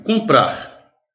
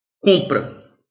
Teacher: Comprar tem 6 fonemas, porque o M não é fonema. O M é apenas uma nasalização do O.